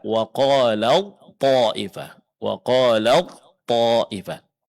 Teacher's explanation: Ketika huruf ta bertemu dengan huruf th, huruf ta sukun, huruf th berharakat, maka ta dileburkan, dimasukkan, diidgamkan ke dalam huruf th. Sehingga yang kita baca adalah huruf th. · Huruf yang pertama ini dileburkan ke huruf yang kedua sehingga yang dibaca itu huruf kedua seolah-olah dia bertasydid. · huruf ta harus mengalah, dia ngikut meleburkan diri ke dalam huruf to, sehingga yang dibaca adalah huruf to yang bertasydid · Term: idgham